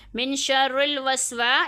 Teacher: یہاں پہ الف مدہ ہو رہا ہے، یہاں پہ ایک انگلی کی مقدار کھینچ کے پڑھیں گے